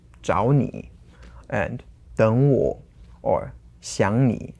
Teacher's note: So all those are two third tones together, and you have to change them according to what you've learned to the second tone and then the third tone. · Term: third tone rule